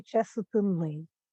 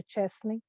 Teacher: в українських словах відбувається спрощення в групах приголосних, тобто середній випадає